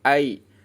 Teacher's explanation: ya sukun dibacanya i bukan e